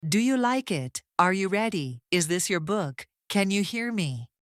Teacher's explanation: Notice how the pitch lifts slightly at the final word. You are not pushing your voice up sharply. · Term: rising intonation